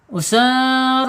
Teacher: rnya harus dibaca tebal karena dia mempunyai makhraj allisan. ujung tepi lidah menyentuh langit-langit yang depan mendekati pangkal gigi seri ra.